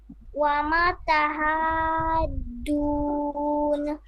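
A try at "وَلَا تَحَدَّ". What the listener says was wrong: হ্যাঁ এবার শুনতে পেলাম, তবে অমা বললেন, এখানে হবে ওয়ালা।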